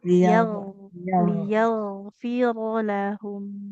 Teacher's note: Jadi selain mengalirkan suara, huruf ghain adalah huruf yang tebal. Kenapa tebal? Pangkal lidahnya naik ya.